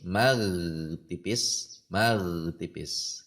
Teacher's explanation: kalau ginnya tidak ditekan pada pangkal lidahnya maka akan berbunyi mag tipis